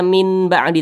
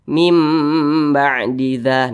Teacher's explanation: seperti itu berbunyi M atau berbunyi huruf mim mim ba'diza nah didengungkan kira-kira dua ketukan atau dua harakat